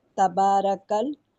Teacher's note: کاف لام زبر کل اور شد ہے، لام 2 دفعہ پڑھا جائے گا